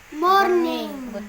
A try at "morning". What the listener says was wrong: R-nya jangan terlalu kelihatan. Good morning, morning. Kayak orang yang lidah telur kayak ini. Jangan R-nya jangan panjang. Jadi R-nya tuh hanya sampai